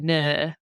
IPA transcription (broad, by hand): nɜ: